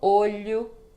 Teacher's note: quando a letra O está no final de palavra ela fica com som de u